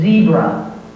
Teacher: the tongue touches the upper gum ridge, and the vibration between the tongue and the upper gum ridge creates the sound.